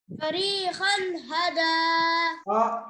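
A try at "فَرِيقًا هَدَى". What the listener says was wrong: आपका मखरज नहीं आ रहा ना आपको, खा पढ़ना है। नहीं नहीं नहीं नहीं नहीं, ये काफ का मखरज अलग होता है।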